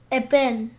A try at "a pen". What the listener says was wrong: Как ты произносишь? Не-не-не-не, я насчет первого звука. A pen. A pen. A pen.